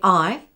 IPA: aɪ